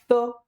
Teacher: ज्यांचा उच्चार करताना आपण आपलं जे जिभेचं टोक आहे, जिभेचं टोक मित्रांनो आपलं द कडे दातांकडे गेलं पाहिजे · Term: दंत्य